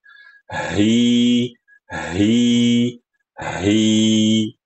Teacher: H suaranya itu dari pangkal tenggorokan. H, H. H lepas, H itu menyempit.